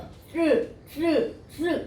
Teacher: 혀가 윗 잇몸에 가가지고 쓰 이런 식으로 발음이 되어야 된단 말이야. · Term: 윗 잇몸 소리